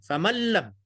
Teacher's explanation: nun kita buang, masukkan terus dalam lam